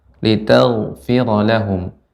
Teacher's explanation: ghain yang sukun dibaca dengan tebal